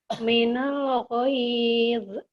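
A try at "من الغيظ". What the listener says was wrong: minal ghaiz. Jangan ada e-nya ya. Minal ghaiz.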